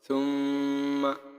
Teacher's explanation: গুন্না নাকের ভিতর গুনগুন আওয়াজ দিয়ে পড়াকে এক আলিফ টানিয়ে পড়িতে হয়